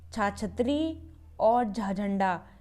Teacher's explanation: हमें बोलने में ज़्यादा जोर लगाना पड़ रहा है, तो इसका मतलब हुआ है महा, यानी कि ज़्यादा वायु लगानी पड़ रही है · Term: महाप्राण